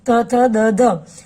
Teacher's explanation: એ દંત્ય વ્યંજન છે, કારણ કે તમે જુઓ તો એ જીભનો દાંત સાથેનો સ્પર્શ થાય છે